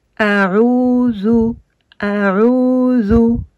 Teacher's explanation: Et le A, le Ain, pardon. Et le Ain qu'on a ici avec une damma qui va donner le son OU